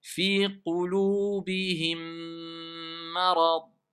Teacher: C'est le deuxième mime qui a assimilé le premier. Et donc, quelque part, ils se sont renforcés les deux, si on veut. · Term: l'assimilation